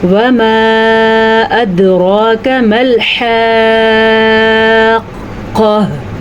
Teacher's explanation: वमा अदरा पे जो मद आपको नज़र आ रही है ये 3 अलिफ के बराबर है। सीधे तरीके से इसको 3 सेकंड तक लंबा करना है।